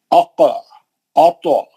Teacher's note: اق اط، یہ خلخلے موٹے رہیں گے کیونکہ مستعلیہ کے حرف ہیں